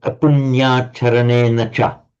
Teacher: But you only do it once. Once you've retroflexed the first n, you don't do it to the second n. So the second n goes back to what it would normally be, the ena with the dental. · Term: retroflex n